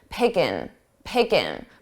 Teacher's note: So I dropped that ing, I dropped that G sound from the ing.